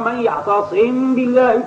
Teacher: فإن كانت الميم أصلية الذات وأصلية السكون فإنك تقرأها بالإخفاء على الوجه الراجح لا على وجه الوجوب، أي على الوجه الراجح على إظهارها، كما سبقنا في قوله تعالى من يعتصم بالله فقد هدي إلى صراط مستقيم. الميم الساكنة هنا يجوز أن تقرأ بالإظهار أي على الشفتين، ويجوز أن تقرأ بالإخفاء أي بالتغييب في قاع الأنف مع راجحية الإخفاء كما سبق.